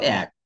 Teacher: এক পড়ার ক্ষেত্রে মনে হচ্ছে না যে ক এর সাথে একটা হসন্ত ধ্বনি আছে